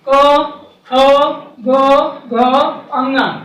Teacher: तो जितना का से लेकर के पा वर्ग तक, इसको देखिए मित्र, का को, क्योंकि इसकी ध्वनि जो उच्चरित होती है वो कंठ से होती है।